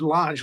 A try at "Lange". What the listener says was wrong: Yeah, it's actually just Lange. Pretend there's no E at the end.